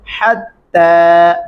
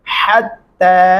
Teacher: बारीक हा के साथ पढ़ेंगे, हत्ता, मोटा वाला हा नहीं पढ़ेंगे